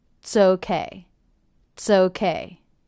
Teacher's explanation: Did you notice how quickly I said the word it's? I reduced it by dropping the vowel altogether and detaching the TS sound to the next word.